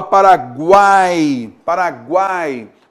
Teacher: no caso de paraguai todas essas esses sons vocálicos eles estão numa mesma sílaba